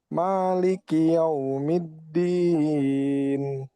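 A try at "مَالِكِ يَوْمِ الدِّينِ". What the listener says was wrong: Kaf jangan seperti ada tasdidnya, jangan maliki, maliki. Nah, itu huruf kafnya itu kayak ada tasdidnya. Nah, jangan. Tapi ya, maliki yaumiddin. Maliki yaumiddin.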